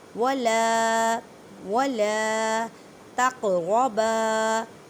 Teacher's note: قوف پہ کلکلہ کریں کیونکہ قاف ساکن ہے، آواز لوٹتی ہوئی محسوس ہوتی ہے کلکلے کے قاعدے میں